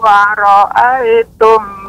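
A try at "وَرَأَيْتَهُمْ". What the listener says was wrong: Di sini ada fathah harokatnya.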